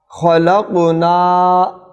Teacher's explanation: یہاں قاف پر جزم ہے، سائلنٹ ہے، تو ساکن قلقلہ کے ساتھ پڑھا جائے گا